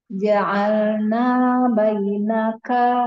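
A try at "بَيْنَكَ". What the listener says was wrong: Diulang kebainakannya pendek aja. kalau panjang itu jadinya Om. Bainaka wa baina langsung kayak gitu ya.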